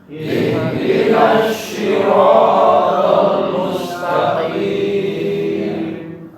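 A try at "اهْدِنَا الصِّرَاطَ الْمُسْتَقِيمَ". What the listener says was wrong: Qaf ya, taqim ya, bukan takim ya. Taqim.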